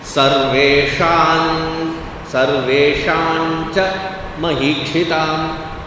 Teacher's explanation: it should sound as though it is coming from the nasal sound of the Cha varga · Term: Anuswara